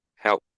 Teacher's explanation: That's how we know it's voiceless. That P when you pronounce it, the throat doesn't vibrate.